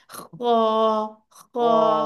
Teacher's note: ठीक है, तो ये आपके वसतुल हल, सॉरी, बिल्कुल ऊपर अदनाउल हलक से आपकी आवाज निकलनी चाहिए, खा। और ये है भी बहुत मोटा सारा, खा, खा।